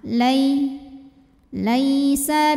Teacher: huruf layin karena ada Ya Sukun sebelumnya berbaris fathah maka dibacanya lembut atau lunak